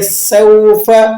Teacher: سین سیٹی والے حروفوں میں سے ہے اور اسی طرح یہ باریک بھی پڑھا جاتا ہے۔